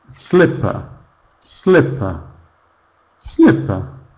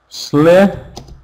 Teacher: All the stress, all the emphasis is on the first syllable.